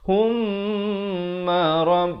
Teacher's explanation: Mim sabdu kena baca dengan dengung dua harakat. Hukumnya wajibul gunnah, wajib dengung dua harakat.